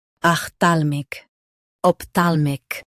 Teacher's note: Stress thal in both versions.